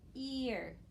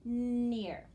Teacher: It's stretched, it's kind of a little bit of two sounds, ear, but they smooth right together